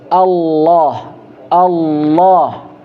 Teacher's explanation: Bagaimana cara metode penyebutannya itu dengan mengangkat pangkal Lisan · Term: Huruf tebal